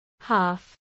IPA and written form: hɑːf (half)